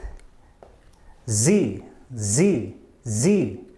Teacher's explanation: our mouth is closed a little bit and here we have our tongue almost almost touching the top of our mouth so that as we blow out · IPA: z